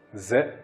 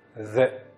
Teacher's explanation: le zel avec la fatha, c'est le bout de la langue qui va se mettre sur l'extrémité des incisives supérieures